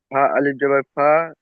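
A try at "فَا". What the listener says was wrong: ফা আলিফ নয়, ফা জাবার ফা, ফা জাবার ফা।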